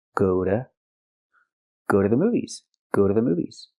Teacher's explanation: Again we hear go to go to not go to but go to the T is pronounced like a fast D.